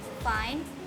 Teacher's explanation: The lower lip is in contact with the upper teeth. The f sound in the word fine is voiceless